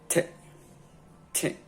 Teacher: T is alveolar, so your tongue must touch your alveolar ridge.